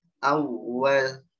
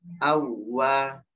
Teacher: ini ada waw sukun ketemu waw tasydid. Tidak ada gunnah ya. Jadi tidak berdengung.